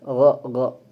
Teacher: termasuk huruf yang syibhu mufakham yaitu semi tebal. Jadi tipis tidak tapi tebal juga tidak. Jadi semi tebal.